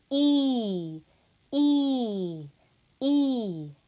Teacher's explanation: the vowel is going to be produced by raising the body of the tongue to a high front position in the mouth · of the tongue to a high front position in the mouth during the production of e the tongue is raised in the vicinity of the hard palate